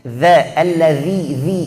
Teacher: Keluarkan ujung lidah. Ini zal bukan zai.